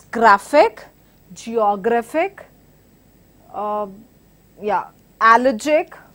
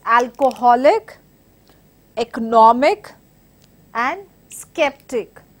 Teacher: Stress is on the penultimate syllable